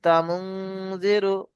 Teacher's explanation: একটু নাকে চেপে আওয়াজটা বার করতে হবে